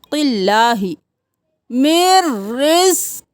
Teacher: रिस्किल, कॉफ मोटा, मिर रिस्किल, मिर रिस्किल्लाही। अब क़िल्लाही नहीं करना, अल्लाह के लफ्ज़ से पहले वाले हर पर ज़ेर है तो बारीक पढ़ेंगे